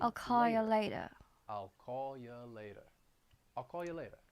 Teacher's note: I'm dropping that R in I'll call you later